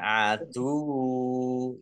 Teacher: Mim sukun bertemu dengan huruf ain, bacaan Izhar Safawi dibaca jelas. Wawunya dibaca double, ada tasdidnya, ya.